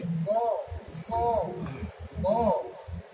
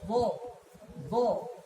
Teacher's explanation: Sifat isti'la itu sifat yang naik pangkal lidahnya, seperti bo